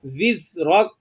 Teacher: زا حروف صفیریہ میں سے ہے، یہاں پر آپ نے تھوڑی سی یہ سیٹی کسی آواز نکلے گی، وز راک، را کو آپ نے موٹا کرنا ہے، ٹھیک ہے۔